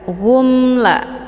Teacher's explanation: yalamun mim sukun ketemu la dinamakan dengan izhar syafawi cara bacanya mimnya dibunyikan secara jelas atau jelas bunyi m-nya cukup ditekan saja tidak perlu ditahan